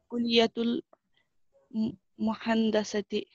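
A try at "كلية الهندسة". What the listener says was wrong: मीम नहीं है कुलियतुल हंदसती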